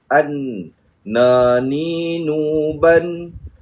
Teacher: huruf nun ni tempat keluarnya adalah apabila hujung lidah ni kita bawakan naik ke bahagian gusi di atas ini